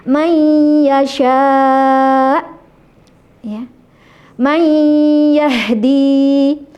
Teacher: Jadi sebagian di mulut dan sebagian di hidung. Idgham bighunah.